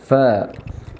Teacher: ചുണ്ടിന്റെ പള്ള അത് മേലെ മുൻപല്ലിന്റെ തല ഇങ്ങനെ തട്ടിയിട്ടാണ് ഉച്ചരിക്കേണ്ടത്